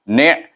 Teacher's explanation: Jadi bunyinya ni'. Ni' mesti pergi kepada mahraj. Dimatikan bunyi ni itu di mahraj ain, iaitu tengah halqum.